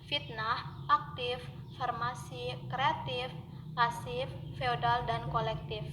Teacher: Konsonan F dilafalkan dengan cara mula-mula menempelkan bibir bawah pada gigi atas, lalu udara dihembuskan keluar secara bergeser. Ucapannya baik pada posisi awal suku kata maupun pada posisi akhir suku kata adalah sama saja.